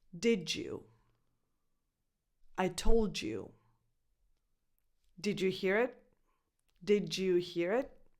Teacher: In this case, the D blends with the Y and you get a J sound. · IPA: [dʒ]